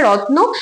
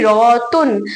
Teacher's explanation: একটি যুক্ত ব্যঞ্জনকে ভেঙে তার মাঝখানে একটি স্বরধ্বনিকে প্রবেশ করানো হয় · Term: স্বরভক্তি